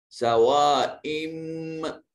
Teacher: سوائم بیننا، یہ حمزہ کے نیچے تنوین، نون تنوین کے بعد با موجود تھا تو اس نون تنوین کو اس چھوٹی میم کے ساتھ بدل دیا۔ سوائم، اب ان نہیں کریں گے، ام کریں گے، حمزہ کو نون نہیں بنائیں گے، حمزہ کے نیچے جو تنوین ہے یہ اس تنوین کو اس میم سے ملائیں گے۔